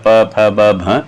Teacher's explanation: ये आपस में दोनों होठ मिलते हैं, इनका उच्चारण स्थान ओष्ठ है, यानी होठ आपस में मिलते हैं पकार जब बोलते हैं।